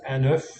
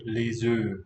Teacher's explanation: And the way I was taught French, apas, that's the one, was that when you pluralize this word egg, O-E-U-F-S, it could be ligature too, the S sort of cancels the F